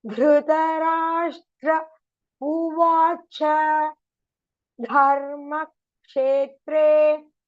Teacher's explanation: So here Dhrita Dharma is all in Mahaprana.